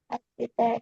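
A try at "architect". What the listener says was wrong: Alright, dibacanya Inggrisnya bukan arsitek ya, teman-teman. Pakai K. Pakai K. Pakai K. Bukan arsitek, bukan, tapi arsitek dibacanya in English.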